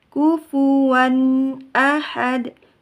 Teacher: Kufuwan. Wan, rasakan dulu ke hidung baru pindah ke ahad. Kufuwan ahad.